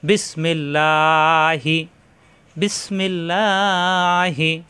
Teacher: এই আল্লাহ শব্দের ডানে আসছে জের এজন্য আল্লাহ শব্দ পাতলা হবে · এই আল্লাহ শব্দের ডানে আসছে জের, এই জন্য আল্লাহ শব্দ পাতলা হবে। আর আরবিতে একে বলা হয় বারিক, বারিক অর্থ পাতলা, অর্থাৎ এখানে মোটা হবে না, এখানে লয় আকার প্রকাশ পাবে, লা হবে।